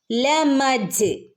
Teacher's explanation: ജീമിന് സുക്കൂൻ വന്നാൽ ഫുൾ സുക്കൂൻ കൊടുക്കണം ജീം കൽക്കലയുടെ ലെറ്റർ ആണ്